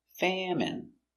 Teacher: Famine. Stress on the first syllable.